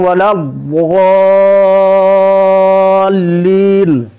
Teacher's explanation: والین کے مد کو بڑھا کے پڑھیں گے